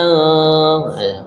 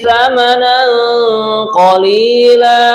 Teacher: ini mendengung karena tanwin berjumpa dengan qaf adalah ikhfa bacaannya